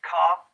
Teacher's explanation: Speakers from Australia, most parts of England, have a low degree of rhoticity, they would say car. The degree of post-vocalic R in North America is higher, they would say car in North America, Ireland, and maybe even in Scotland.